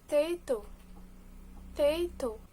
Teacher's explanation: Weak syllable deletion, omitting the unstressed or weak syllable of a multisyllabic word.